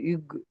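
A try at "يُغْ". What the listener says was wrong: ইগু নই ইউকু। ইগ নই, ইয়া গয়ন পেশ ইউগ হয়। গয়নের আওয়াজ গয়ন, ইয়া গয়ন পে ইউগ।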